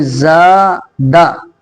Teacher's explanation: اب زا کو کھینچنا ہے، دال کو نہیں کھینچنا ہے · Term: حروف مدہ